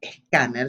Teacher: Fíjense que en este caso, scanner, si yo lo pronuncio así, está adaptado fonológicamente al español, agregamos esa E inicial porque no podemos empezar una sílaba con sk, con esa secuencia de fonemas